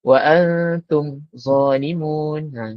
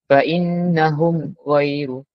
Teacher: Sama ada dalam satu atau dua kalimah, maka hukum bacaannya izhar. Iaitu wajib menyatakan sebutan huruf mim sukun daripada makhrajnya serta tanpa dengung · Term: izhar syafawi